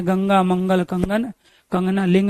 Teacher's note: यह नाक से उच्चारित होते हैं। इसलिए अनुनासिक कहलाते हैं। इनका प्रयोग अनुस्वार के रूप में हम करते हैं।